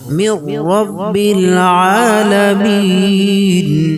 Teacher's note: খাড়া জবর এক আলিফ পরিমাণ টান, লামিন মধ্যে আরজি ওয়াকফি 1 থেকে 3 আলিফ পরিমাণ টানবো